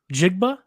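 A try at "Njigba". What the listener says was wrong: Najigba. It's a half silent N. Najigba. Najigba. Najigba? There's no A in there.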